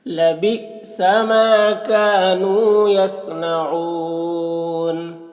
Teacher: حمزہ ساکنہ جھٹکا لگے گا